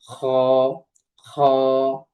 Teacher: তারপরে আছে খ। খটা উচ্চারিত হয় আমাদের যে কণ্ঠনালী আছে, কণ্ঠনালীর শেষ অংশ থেকে